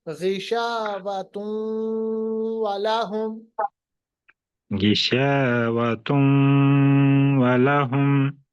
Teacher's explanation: तुन नहीं, तुम वाव के साथ मिलाइए